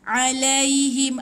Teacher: Tu bunyi bukan a. Dia dekat tekak ain dekat tekak, bukan dekat hidung.